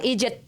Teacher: só o americano ele fala id e segura